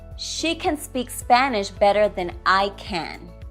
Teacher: The first can is the weak form. The second can is the full form.